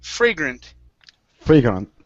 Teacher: so the stress is at the very beginning